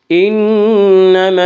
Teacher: انما نون مشدد غنہ ہوگا، غنہ کی مقدار 1 الف ہے۔